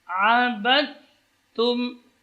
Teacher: Sini idgham. Jadi huruf dal hilang, masuk ke dalam huruf ta.